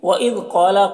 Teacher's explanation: قاف کو پر پڑھیں گے، حروف مستعلیہ میں سے ہے، اور الف مدہ ہے، ایک الف کے برابر کھینچیں گے۔